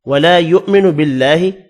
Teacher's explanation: الف مدہ ہے, ولا اس کو بھی ایک الف کی مقدار میں کھینچ کر پڑھیں گے